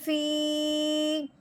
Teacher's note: فا یا زیر فی، یا کے اوپر جزم ہے، یا ساکن سے پہلے زیر آنے کی وجہ سے اس کو ہم نے لمبا کیا ہے، فا کو یا کے ساتھ ملاتے ہوئے۔ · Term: ماد